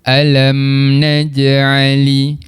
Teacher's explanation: kita perlu jelaskan bacaan mim mati tanpa dengung. Tanpa dengung yang dimaksudkan kat sini adalah kita tak baca dengung sampai 2 harakat tu. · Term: izhar syafawi